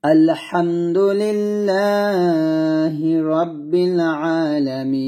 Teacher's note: থামার কারণে এই নুনটাকে আমি সাকিন করে ফেলছি